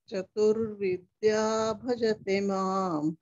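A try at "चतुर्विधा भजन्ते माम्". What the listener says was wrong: Chaturvidha, not Vidya. Bhajante mam, not bhajate.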